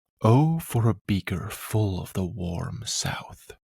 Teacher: that o opens the line with a strong stress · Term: trochee